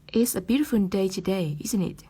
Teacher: Bởi vì người hỏi đã biết rằng hôm nay là một ngày đẹp trời rồi, cho nên chúng ta sẽ sử dụng cái ngữ điệu đi xuống chỉ là để nhấn mạnh, xác nhận lại thông tin thôi